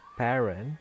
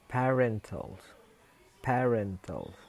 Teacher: Jadi stresnya itu bergeser ke ren. Sebelumnya stresnya itu ada pada pa. Kemudian karena dia menerima eh suffix all, maka stressnya pindah ke r menjadi parental.